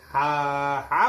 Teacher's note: कंपन नहीं तो मतलब यह अघोष है ठीक और जब आप हा बोलेंगे हा हा बोलेंगे तो आपको कंपन महसूस होगी तो यह सघोष होता है